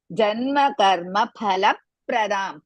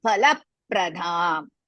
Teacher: Pa is Mahaprana as well as Hriswa, la Hriswa, pra Hriswa, da dirga.